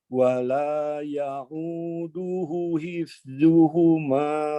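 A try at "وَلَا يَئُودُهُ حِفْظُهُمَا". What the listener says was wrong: Oke, pada kata ya'uduhu panjangkan. Ada tanda panjang di sana. Wala ya'uduhu.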